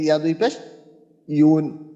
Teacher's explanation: ইয়ার মাখরাজ হলো 6 নম্বর মাখরাজ জিহ্বার মধ্যখান তারপর আবার উপরের তালুর সঙ্গে লাগাইয়া তাহলে ওইখান থেকে ইয়া দুই পেশ ইউন হ্যাঁ উন হ্যাঁ জি